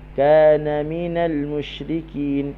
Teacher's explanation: Kana kaf, ka huruf k. Kana dia tak ada angin, tak perlu kita letak angin